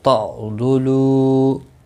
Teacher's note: عین ساکن کو ہلانا نہیں، ضاد مستعلیہ ہے، پر پڑھا جائے گا